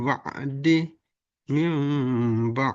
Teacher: nun sukun bertemu ba sehingga dibaca mim